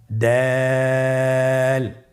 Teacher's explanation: দালের মাখরাজ কোন জায়গা থেকে আপনারা স্ক্রিনে দেখুন, ছবিতে দেখা যাচ্ছে জিহ্বার আগা সামনের উপরের 2 দাঁতের গোড়ার সঙ্গে লাগিয়ে উচ্চারিত হয়